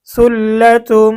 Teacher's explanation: তানবিনের পরে ইদগামে বা গুন্নার হরফ মিম এসেছে, তা আমাদেরকে গুন্না সহ মিলিয়ে পড়তে হবে।